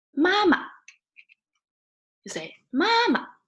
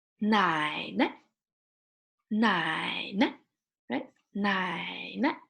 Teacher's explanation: for neutral tone it sounds short and fast